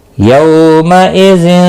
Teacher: यौ वाउलिन है, थोड़ा नरमी के साथ खींच कर अदा करेंगे। मइज़िन, तनवीन के बाद आगे अगला हरफ जो है वो ता है, इसलिए यहाँ पर इख़फ़ा हकीकी होगा, गुन्ना के साथ पढ़ेंगे।